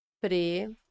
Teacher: essas vogais ficam em sílabas diferentes, cada uma em uma sílaba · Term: iato